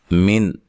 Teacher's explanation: نون ساکن کا اظہار ہے، غنہ نہیں کریں گے